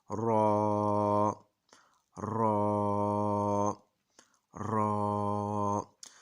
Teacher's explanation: रॉ असल में ज़ुबान की नीचे वाली साइड से अदा होता है। जब ज़ुबान को हम ऊपर को उठा के थोड़ा सा गोल करते हैं तो नीचे से रॉ की आवाज़ निकलती है और रॉ को हमने थोड़ा मोटा पढ़ना है, थोड़ा सा मोटा।